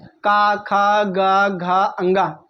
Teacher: लेकिन जब हम का बोलते हैं तो हमारे मुंह के किस भाग से आवाज़ निकलती है? कंठ से निकलती है। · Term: क वर्ग, का वर्ग